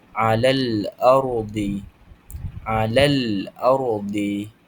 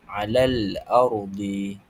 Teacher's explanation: Jadi alif lam qamariah ini ialah lam sakinah atau sukun yang bertemu dengan salah satu huruf qamariah dan dibaca dengan menjelaskan huruf lam. Cara bacaannya bunyi huruf lam disebut dengan jelas tanpa dengung.